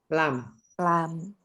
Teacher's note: Lam itu di mana alisan? Alisan ujung lidah antara tepi lidah secara bersamaan bertemu dengan gusi atas